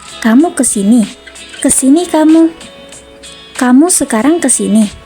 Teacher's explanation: Selanjutnya ada kalimat perintah atau imperatif, ditandai dengan pola intonasi datar tinggi